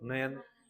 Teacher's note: न बोलते समय जीभ की नोक ऊपर के मसड़ों को टच करती है।